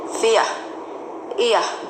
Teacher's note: The R should not be stressed. So it should be like fear.